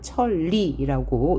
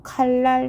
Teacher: 또 칼날 할 때 니은이 리을로 바뀌었습니다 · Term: 유음화